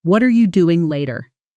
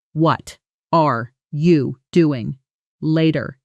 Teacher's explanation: At natural speed, what are you collapses into something closer to hutcha or wutcher, almost one syllable. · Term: connected speech